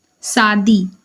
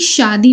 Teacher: छत्तीसगढ़ में श की जगह स का प्रयोग करते हैं सादी ना कि शादी बोलते हैं छत्तीसगढ़ में शादी ठीक है